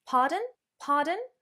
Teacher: To say pardon, or indeed, remember that down-up intonation